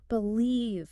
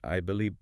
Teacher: For the V sound, your upper front teeth must gently rest on your bottom lip. And then you voice it. You use your vocal cords. Believe. You can almost feel a little vibration on your lip.